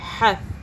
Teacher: ہا تا زبر حث، تا کو سافٹ پڑھیں گے، زبان ہلکی سی باہر کر کے، یب حث، ہا کو حلق سے پڑھیں گے۔